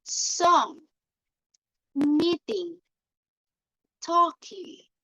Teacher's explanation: And with the sound like ng, as in song, meeting, and talking, the back of the tongue is raised, touching the soft palate. The sound travels out through the nose.